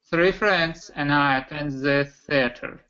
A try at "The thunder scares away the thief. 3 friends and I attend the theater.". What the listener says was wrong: Okay, the theater. The theater. Okay, so for you, I would say practice the voice TH sounds more, okay?